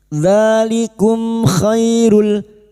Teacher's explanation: Dalikum mim sukun bertemu k idhar syafawi. Mim sukun dibaca jelas tanpa mendengung